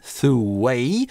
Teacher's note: Lee-thew это /uː/ долгий, дальше гласный, связываем через [w] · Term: linking [w]